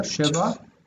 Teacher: Oh, the accent's on the first syllable there.